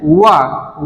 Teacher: और अगला हमारा क्या है, दंत औष्ठ है हमारा, दांतों और ओष्ठों के माध्यम से जिसका उच्चारण होता है वो हमारे शब्द क्या आते हैं, वा हमारा जो होता है, इसमें दांत और ओष्ठ का संयोग से इसका उच्चारण हो रहा है।